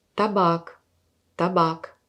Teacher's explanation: Vous voyez la premier a c'est très vite. Par contre la deuxième qui est accentuée plus long que la première a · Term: voyelle accentuée